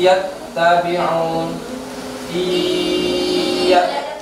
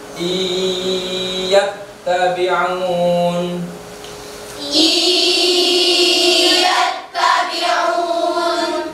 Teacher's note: memasukkan suara nun sukun kepada ya, sehingga nun sukunnya melebur menjadi ya. I, bukan in lagi, sudah dimasukkan ke ya. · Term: idgham bi gunna